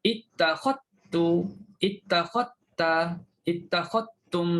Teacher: Kalau kita baca Abu Amr, kita masukkan zal dalam ta.